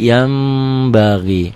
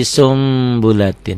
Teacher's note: Jadi sumbulatin kenapa karena nun mati ketemu ba huruf iqlab ya Bunyi n-nya berubah menjadi m samar sedikit seperti ikhfa Safawi · nun mati nun sukun ketemu ba satu kata satu kalimat bunyi n-nya berubah menjadi m